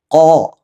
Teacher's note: ഖാഫിന്റെ മഖ്റജ് നമ്മുടെ നാവിൻ്റെ അങ്ങേ അറ്റം അഥവാ ഈ ഭാഗം മേലെ അണ്ണാക്കിൽ മുട്ടിക്കുക. കോ. പല ആളുകളും സാധാരണ കല്ല് എന്നൊക്കെ ഉപയോഗിക്കുമ്പോൾ നമ്മൾ മലയാളത്തിൽ പറയുന്ന കായ ഉപയോഗിക്കുക, അതല്ല, മറിച്ച് നാവിൻ്റെ അങ്ങേ അറ്റം മുട്ടിക്കണം.